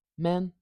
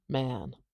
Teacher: can you hear that duration difference pretty short pretty long